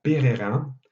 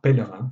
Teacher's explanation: un des deux R a été remplacé par un L, qui est une consonne qui est de la même nature. Il s'agit d'une consonne liquide, qui donc se combine bien avec le R, mais qui permet une différenciation entre les deux consonnes. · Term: dissimulation